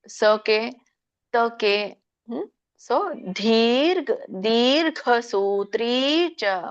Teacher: ದ ಗೆ ದೀರ್ಘ ಇದೆ ದೊಡ್ಡ ಮಹಾಪ್ರಾಣ ಘ ಇದೆ ಘ ಮಾತ್ರ ದೀರ್ಘ ಇಲ್ಲ